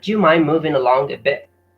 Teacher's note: Along a bit, bit is pronounced as bit without T. The T is pronounced as a glottal stop, or as we call it in Arabic, al-hamza.